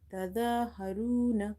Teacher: Ra is heavy because there is a dhamma on it, and dha is heavy because of having vertical fatha on top of it.